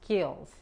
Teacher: Y no se escucha una E antes de la S.